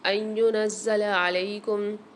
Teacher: زا کے اوپر بھی مشدد ہے، اس کو بھی سختی اور جماؤں کے ساتھ پڑھیں گے، اور یہ ویسے بھی لفظ زا سختی اور جماؤں کے ساتھ ادا کیا جاتا ہے.